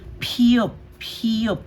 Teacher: Magkakaroon ng hangin or yung puff of air pag binigkas.